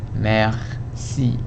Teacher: When you say merci, the R is not voiced. You don't say merci because the R is influenced by the consonant right next to it, the C. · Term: juicy hiss R